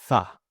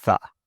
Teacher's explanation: You can see for all of these my tongue is between my teeth and that's how I get that sound. The air is moving out of my mouth as my tongue is placed between my teeth. th. Now, it's very common for students to replace this sound with the s, the zed, the t, or the duh sound.